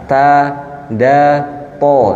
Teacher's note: Jadi lidah dinaikkan supaya dapat huruf tebalnya huruf th. Huruf th ada di ujung lidah bertemu dengan langit-langit. Nah, sama tempatnya dengan dal atau ta. Ta da th. Namun th dia tebal.